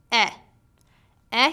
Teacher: your lips are in the neutral position your mouth is open wider than for a your tongue is at the mid level in your mouth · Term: short e sound